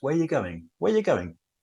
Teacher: Often if it's just where are you going, are disappears.